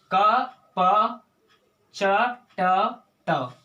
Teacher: वर्ग का प्रथम अक्षर किस में आएगा? खर प्रत्याहार में आएगा, विवार, श्वास, अघोष में आएगा।